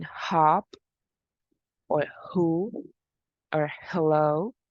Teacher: It is a voiceless glottal fricative. Remember, it is glottal because there is a restriction of the airflow at the vocal cords or at the glottis.